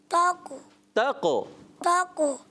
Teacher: کلکلا کریں گے، قاف موٹا رکھیں گے